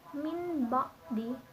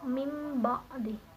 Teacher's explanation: Namun ini dalam segi asimilasi ini mim ba'di itu huruf ba mempengaruhi huruf yang belakang yaitu huruf nun, di mana huruf nun ini berubah menjadi huruf mim menyamai dengan huruf ba yaitu yang sifatnya syafatani atau 2 bibir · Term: asimilasi regresif